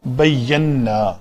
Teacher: یہ لفظ نون ساکن اور اس کے بعد نون متحرک، تو اس نون کا اس نون کے اندر ادغام ہوگا تو یہ لفظ بنے گا بینا.